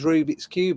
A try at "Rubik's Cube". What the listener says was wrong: You put the emphasis on the wrong bit. Rubik's Cube. It's the way you said Rubik's Cube, not a Rubik's Cube.